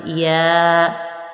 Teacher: جیم، شین اور یا ان تینوں کا مخرج ایک ہے یعنی زبان کا درمیان اور تالو کے درمیان سے ادا ہوتا ہے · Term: حرف شجریہ